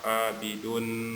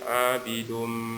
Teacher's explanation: Jadi dirapatkan bibirnya, bukan dibaca abidun, bukan dibuka ya mulutnya, tapi abidum ditahan. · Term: idgham di gunnah